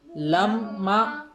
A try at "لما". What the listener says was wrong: پھر نون کی آواز آئی. لما نہیں لما.